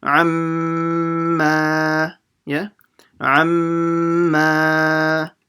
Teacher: Now here, okay, next box is the same thing, but now the mim has an alif, so now you have to stretch it after you do the ghunna.